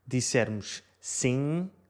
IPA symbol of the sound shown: siŋ